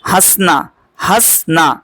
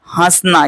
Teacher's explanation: यहां पर जो यह ह है ना इसकी आवाज हमें नाक से निकालनी है हसना तो यहां पर हम नो नहीं यूज करेंगे ये नहीं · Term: अनुनासिक